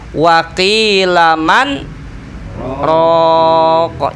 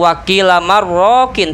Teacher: Tapi dalam ayat ini saja, surah Al-Qiyamah ayat 27, ada nun mati bertemu ro, tidak terjadi idgham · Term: saktah